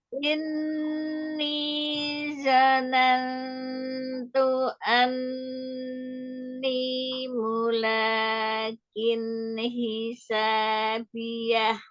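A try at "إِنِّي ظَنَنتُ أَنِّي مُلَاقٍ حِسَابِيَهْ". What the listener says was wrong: Ini dho-nya ditebalkan isti'lanya. Inni dhanantu anni mulaqin hisabiyah. Mulaqin huruf qafnya. Mulaqin hisabiyah.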